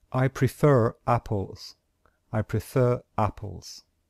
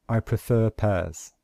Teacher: since the next word starts with a vowel then we must pronounce this letter R